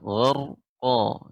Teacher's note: di sini qaf huruf isti'la, ya, dibaca dengan tebal